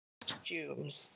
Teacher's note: It still has an aw sound, cost.